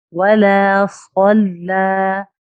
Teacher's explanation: लफ्ज जलाला के अलावा लाम है, इसलिए ये बारीक अदा हुआ। यानी कोई भी लाम हो लफ्ज जलाला के अलावा तो वो लाम बारीक अदा होगा।